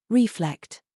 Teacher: reflect emphasize the second syllable